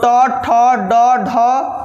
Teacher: ट वर्ग का उच्चारण स्थान क्या है तो बुआ मुर्धा है